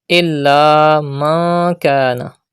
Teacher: There is kaf ikhfa letter after noon sakin. The rule ikhfa will be done and gunna will be done.